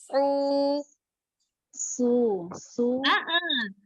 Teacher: Su pangkal lidah naik. Sambil dirasakan pangkal lidahnya dinaikkan huruf shotnya.